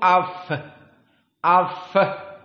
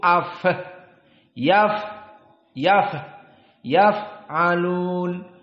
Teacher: Fa di sini jika disukunkan keluar nafs jaroyan nafs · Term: alhams